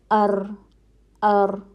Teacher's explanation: तकरीर का मतलब है दोहरा हुआ हर्फ अदा करते हुए एक तरह की कपकपी पाई जाती है और अ ठीक है बहुत ज्यादा भी आपने जरा मसन तरीका · تقریر کا مطلب ہے دوہرا ہوا. حرف ادا کرتے ہوئے ایک طرح کی کپ کپی پائی جاتی ہے